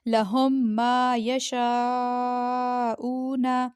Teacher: اچھا، اب میم پہ جزم ہے اور آگے میم پہ تشدید ہے تو ہم نے ہا پیش کو دوسرے میم سے ملایا، مشدد میم سے، ٹھیک ہے، بیچ والے میم کو ہم نے سائلنٹ کر دیا بیچ میں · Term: ادغام